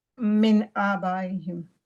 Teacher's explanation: یہ throat letter ہے حمزہ, اور اس لیے یہاں ہم من کو کلیئر پڑھیں گے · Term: اظہار